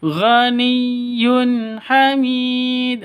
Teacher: tanwin bertemu dengan ha, jelas terang karena izhar halqi. Jelas terang izhar halqi, tidak boleh dengung. Harus jelas ya.